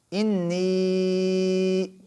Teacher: نون کے اوپر غنہ بھی ہوگا، ہم نون کو لمبا بھی کریں گے کہ یا مدہ بھی ہے اور یا کے اوپر چھوٹی مد بھی ہے، تو لہٰذا مقدار میں اضافہ ہو جائے گا۔